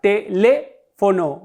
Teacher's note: Mi sílaba tónica es le. Y puesto que mi sílaba tónica es la antepenúltima, dijimos que las esdrújulas siempre llevan tilde.